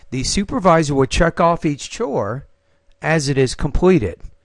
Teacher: you paused after chore that makes a lot of sense so you have one thought group right after the word chores so you might want to use a little bit Rising tone